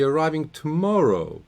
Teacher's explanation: the voice has to go up on the stress syllable which is here second syllable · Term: focus word